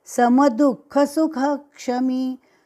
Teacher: ये ह का उच्चारण थोड़ा सा हल्का लगना चाहिए, विसर्ग के जैसा